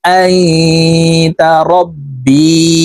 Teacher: এখানে ইকফা গুন্না, নুন সাকিনের পরে ইকফার 15টি হরফের একটি হরফ তা আসছে, এই কারণে এই নুন সাকিনকে নাকের ভিতরে লুকাইয়া গুন্নার সহিত পড়ব